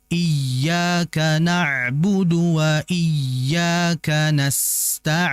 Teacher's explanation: Sin memiliki sifat rikhawah atau rakhawah yang bermakna alirannya itu jauh lebih lama atau panjang dibandingkan tadi ain yang bersifat tawassud ya. Jadi kalau tawasul itu mengalirnya sedang.